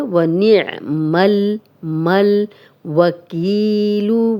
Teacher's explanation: وَکی یا مدہ ہے، جزم والی یا، پیچھے کاف پہ زیر، دو حرکات لمبا کریں گے اور اگر ہم اس پہ سٹاپ کریں گے تو یہاں جزم لگ جائے گی۔